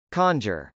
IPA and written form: kˈɑndʒɚ (conjure)